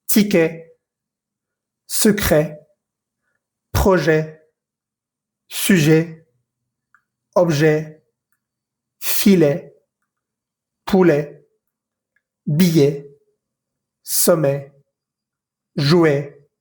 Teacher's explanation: En ninguna de estas palabras pronuncié la T que va al final, pero sí pronuncié la E que va antes de la T. · en francés vamos a leerla E como la E que conoces un poco en español, tal vez abriendo un poco más la boca. Pero digamos que en este caso sí va a sonar ese sonido de E al final.